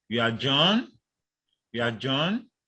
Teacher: Now the four rising intonation tune is characterized by a sequence of short fall followed by a short rise in pitch. It is used to express doubt.